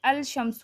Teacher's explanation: اگر ال کے بعد حروف شمسی آ جائیں تو لام کا ادغام ہوگا، یعنی لام نہیں پڑھا جائے گا، مثلا الشمس، اب اس میں ہم نے الشمس نہیں پڑھنا، ٹھیک ہے۔